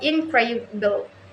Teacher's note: Primary stress, the syllable that carry the most emphasis in the word. In word incredible, for example, the primary stress falls on the second syllable